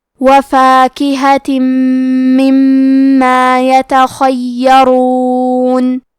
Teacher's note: حرف الیا کے تشدید کو ظاہر کریں گے اور اسے 2 حرف کے برابر پڑھیں گے. کیونکہ را پہ پیش ہے تو یہاں را کا حکم ہے تفخیم، تو ہمیں حرف را کو موٹی آواز میں پڑھنا ہے · خاء کی ادائیگی حلق کے اوپر والے حصے سے ہے. خاء حروف التفخیم میں سے ہے تو ہم یہ حرف کو موٹی آواز میں پڑھیں گے. حرف الیا کے تشدید کو ظاہر کریں گے اور اسے 2 حرف کے برابر پڑھیں گے.